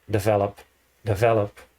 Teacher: develop and benefit you have the stress in the first syllable